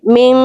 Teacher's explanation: نون کو ظاہر کر کے نہیں پڑھنا, نون کی آواز کو چھپا لینا ہے, من, صحیح ہے. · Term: اخفا